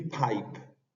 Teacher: la palabra Pipe tiene la aspiración que se le dicen aspiration más que una aspiración es una exhalación que tienen algunas letras al inicio de las palabras como el caso de la letra p